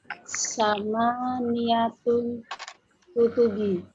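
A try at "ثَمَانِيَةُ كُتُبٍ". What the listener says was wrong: Kutubi atau bin?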